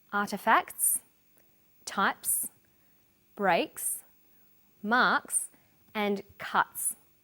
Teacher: The second way S is pronounced at the end of a word is s. It's pronounced this way after voiceless consonants. P, t, k, f and th.